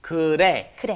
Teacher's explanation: It's almost a D sound, isn't it? It's in between an R and L, which almost kind of comes out like a D sound.